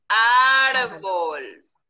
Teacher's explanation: ¿Ven que la fuerza la tiene en la primera sílaba?